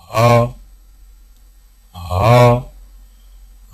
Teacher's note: ہا کی ادائیگی میں زبان کی جڑ کو حلق کی طرف دبائیں، بغیر باریک اور بغیر رگڑ کھاتی سانس میں پڑھیں